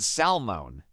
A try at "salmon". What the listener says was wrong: Yes, the correct way is salmon. The L sound is silent.